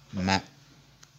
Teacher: La lettre se prononce en collant les deux lèvres qui occasionnent un écoulement continu de l'air dans la fosse nasale. Donc elle crée un nasillement. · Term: labio-nasale